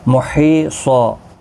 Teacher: حی یا مدہ ہے، 1 الف کی مقدار کے برابر کھینچیں گے، اور وقف بالابدال یہاں پر بھی ہوگا۔ · یہاں پر 2 زبر کو بدل کر 1 زبر کے ساتھ وقف کریں گے، وقف بالابدال ہوگا، الف مدہ بنے گا، 1 الف کی مقدار کے برابر کھینچ کر وقف کریں گے۔